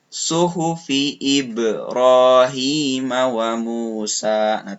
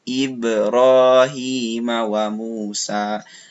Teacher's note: wa Musa terdengar Ya jelas pantulannya ibroohiima wa Musa walaupun Hai di sini qalqalahnya kecil gitu sugro ya Tapi tetap agak harus jelas terdengar pantulannya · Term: Qolqolah Sugro, qalqalah sugro